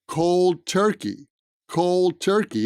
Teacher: point is the pronunciation cold turkey he went called turkey so the d at the end of cold is reduced and it's practically not there